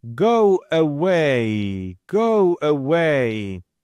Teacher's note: So if you have two vowels, you necessarily need to add a third sound. I'm going to just try to add this sound, which is the sound wa